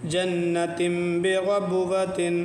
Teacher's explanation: تنوین نون تنوین کی ادا نون ساکن ہے، اس لیے نون ساکن اور تنوین ایک ہی سمجھو ادا کی ادائیگی کے اعتبار سے، تو تنوین میں ایک نون ساکن چھپا ہوا ہوتا ہے، اسی نون ساکن کو میم پڑھتے ہیں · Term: اقلاب